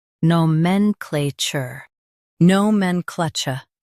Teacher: Emphasize men and keep chur soft.